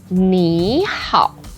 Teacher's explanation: When we have two words put together and both are third tone, the first word becomes the second tone. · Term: second tone, third tone